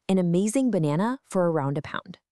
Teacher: how quick and unstressed those a sounds are? That's the schwa doing its thing.